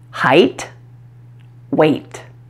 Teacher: since it's at the end of the word don't release the puff of air like you would for a tea at the beginning of a word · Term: final T